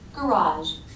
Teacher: It's a very weak, unvoiced sh sound. It's not garage or garage, but garage.